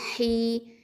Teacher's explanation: அப்போது வா ஃபத்தா வ, அடுத்தது ஜீம் ஃபத்தா ஜ, ஹ கெஸ்ரா யவுல் மது ஹி. இந்த ஹ அப்படிங்கிறது வந்து வசத்துல் ஹல்க் எழுத்து, நடு தொண்டை எழுத்து